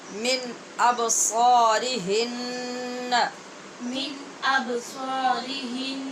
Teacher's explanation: ابصا میں با پہ قلقلہ